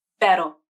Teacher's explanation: The R in pero is pronounced with the flap, a single flap of the tongue tip to the alveolar ridge.